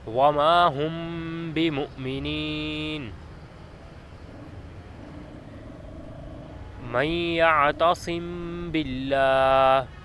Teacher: میم ساکن کے بعد جب با آ جائے تو اخفاء کریں گے، مطلب جو آواز ناک میں جائے گی اس کو اخفاء کی حیثیت سے لے کر جائیں گے، غنہ نہیں کریں گے، اور اس اخفاء کو اخفاء شفوی بھی کہتے ہیں۔